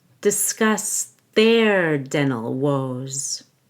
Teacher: make sure you stress the second syllable of discuss